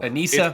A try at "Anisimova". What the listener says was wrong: but it's not Anissa. It's Anisim. They don't want the E. It's Anisimova.